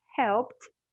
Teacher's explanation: help ends with the p sound so it's voiceless